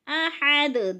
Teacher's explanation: احد کی ہاں باریک پڑھی جائے گی، حلق سے نکال کر پڑھیں گے۔ احد، دال پر قلقلہ ہے، دال کو ہلا کر پڑھنا ہے۔